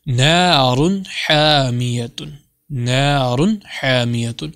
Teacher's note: غنہ نہیں کیا، کھینچا نہیں، لمبا نہیں کیا، سمپل میں نے کیا نارن، یعنی ظاہر کر کے واضح کر کے پڑھا